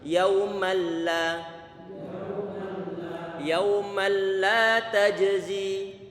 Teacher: Fokuskan hanya di bagian lidah tanpa ada sangkut paut dengan hidung. Karena idghamnya adalah bila gunnah tanpa disertai dengan dengungan. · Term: idgham bila gunnah